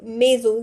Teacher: Now if my S is between two walls, if my S is in between two walls, the S sound changes into Z · S is in between I and O, so it becomes maison, Z sound.